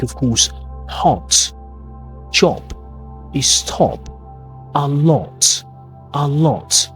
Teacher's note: And the O sounds in words like, of course, hot, job, stop, a lot. Round your lips slightly and then the sound is very British.